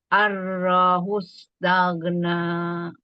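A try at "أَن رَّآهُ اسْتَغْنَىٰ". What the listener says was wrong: jangan ada arro gitu. Arro'ahus. Rohnya gimana arro'anya? Arro'ahu.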